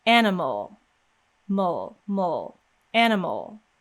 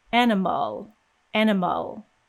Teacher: the first a we see is pronounced as a and the second a that we see is not pronounced at all animal mole mole animal you can see that we go directly · In fact, if you think about the word animal in American English, you see the letter A twice, but each time it's pronounced completely differently. So the first A we see is pronounced as ah, and the second A that we see is not pronounced at all.